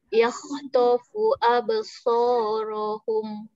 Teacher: Sifat ra tafkhim tebal.